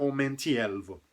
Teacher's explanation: Vocês reparam que mais uma vez tá caindo na penúltima sílaba, contando no final pro começo da palavra, redundância, mas só para ficar bem claro, tá caindo no tá caindo no elvo, né? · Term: acento tônico